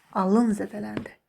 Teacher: Gördünüz, vurğu indi ikinci hecaya düşür. Birində feil olduqda ilk hecada, amma belə deyək, isim olduqda son hecadadır.